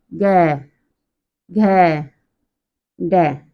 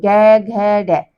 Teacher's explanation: इनको बोलते समय हमारी जो स्वर तंत्रियां होती हैं उनमें क्या होता है कंपन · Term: घोष